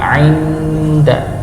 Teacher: Nun sukun bertemu dengan huruf dal, maka disamarkan